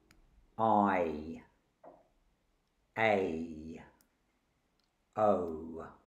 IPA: ai ei aʊ